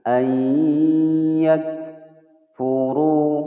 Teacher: fu pendek, ru panjang 2 ketukan, kemudian dibaca tebal